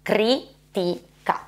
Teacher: la I è la vocale più chiusa in assoluto